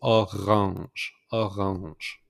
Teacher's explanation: Instead of orange is orange. So make the pronunciation R with the throat. So orange, orange.